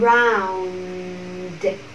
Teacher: Từ này có hai âm tiết thì các bạn cũng để ý cho mình âm tiết đầu tiên không nhận trọng âm là âm ơ giản lược. Âm tiết thứ hai nhận trọng âm around. Để ý hai phụ âm đuôi phát âm hết âm rồi mình âm d.